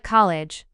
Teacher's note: in words like college the sound changes from dark to light you start with the dark L then move your tongue tip to touch just behind your teeth to make a lighter sound before the next vowel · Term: light L after a dark L